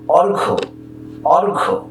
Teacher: এই জফলার কোনো উচ্চারণ নেই, শুধু অ, রেফের জন্য র এবং ঘয়ের সঙ্গে ওকার